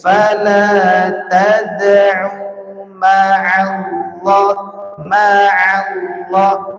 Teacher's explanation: huruf Ain itu harus kena Tengah tenggorokan enggak boleh dibaca enggak tapi kena Tengah tenggerokan tapi enggak sampai